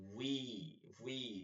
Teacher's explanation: ওয়াও ঠোঁট গোল করে বলবো, মুখে ঠোঁটের মধ্যে মাঝখানটা ফাঁকা থাকবে